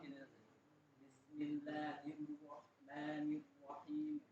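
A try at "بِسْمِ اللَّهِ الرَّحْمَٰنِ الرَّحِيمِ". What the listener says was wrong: Mirro gitu. Nggak boleh. Karena ro itu bukan huruf bibir.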